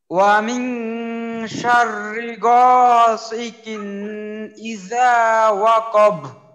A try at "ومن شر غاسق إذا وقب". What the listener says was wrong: গ আরেকটু মোটা করতে হবে, কফে মাখরাজে আরেকটু ধাক্কা দিতে হবে।